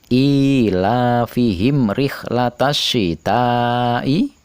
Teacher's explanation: Rihlatasyita'i, alif lamnya tidak terbaca, langsung dileburkan pada huruf shin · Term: idgham syamsiyah